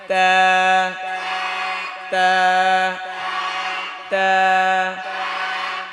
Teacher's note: জিহ্বার আগা দাঁতের গোড়া